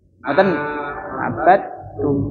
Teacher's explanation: Jadi ee qalqalah dalnya itu tidak terlihat. Tidak terlihat. Jadi langsung masuk ke taknya.